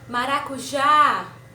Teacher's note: a gente se prolongou na última sílaba que é já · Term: sílaba tônica